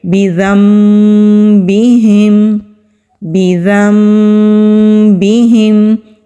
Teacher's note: نون کو ہم نے نہیں پڑھنا، نون کو ہم نے بدل دینا ہے میم کے ساتھ، اس کو اقلاب کہتے ہیں۔ تو پڑھیں گے بِذَنبِهِمْ، بِذَنبِهِمْ۔